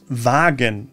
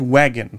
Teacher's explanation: The tricky part here is the W, the V, which is pronounced like the English V. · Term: German W